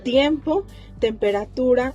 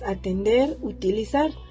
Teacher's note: la letra t está dentro de la categoría de las consonantes dental oclusivas sorda